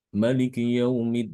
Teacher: dibaca tanpa Alif jadi dibaca pendek